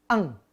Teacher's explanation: untuk Kaf dan Q maka ikhfanya seperti huruf N dan G Eng